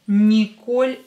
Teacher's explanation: here О is stressed, so don't change it. It will be pronounced as О, because it's stressed.